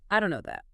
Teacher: The T sound disappears. The vowel might change. And that done sound links right into no.